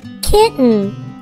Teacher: we only say the T sound once, even though the letter T is written twice.